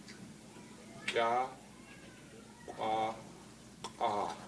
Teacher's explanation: can you feel how it goes from, the front part of the back of your mouth to the really far back of your mouth with ka, qua, ka?